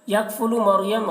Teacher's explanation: یکفلو مریم را کو پر پڑھیں گے، را ساکنہ سے پہلے یہاں پر زبر ہے تو را کو پر پڑھیں گے، اور یہاں پر علامت دیکھیے صاد ہے، صاد یہاں پر علامت صاد ہے تو یہاں ملا کر پڑھنا چاہیے، لیکن اگر کوئی تھک کر ٹھہر جائے تو رخصت ہے، ٹھہر سکتے ہیں۔